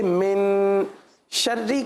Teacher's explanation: من یہاں پر غنہ کیا جائے گا, اور غنہ ہوگا اکفا والا.